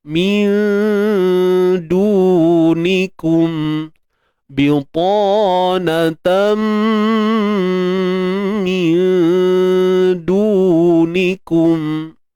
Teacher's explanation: Sembunyikan nun mati, jangan sebut nun tepat pada makhrajnya. Apabila bertemu dengan huruf dal, huruf dal ni bersifat nipis, maka dengung di sini juga nipis. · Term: ikhfa hakiki